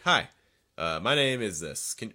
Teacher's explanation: So I really recommend like a sharper falling intonation, sound firmer, a little bit more authoritative, a little stronger.